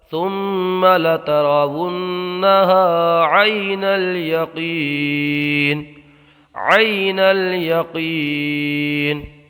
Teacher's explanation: غنے کی مقدار ایک الف کے برابر، غنہ کے معنی ناک میں آواز لے جانا ہے